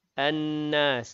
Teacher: nun yang bertasydid, wajibul ghunna, wajib dengung, dua harakat